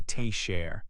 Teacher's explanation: The first syllable is stronger.